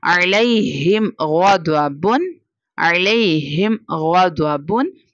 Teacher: ہمیں اظہار شفوی کرنا ہوگا، یعنی بغیر غنہ کے پڑھنا ہوگا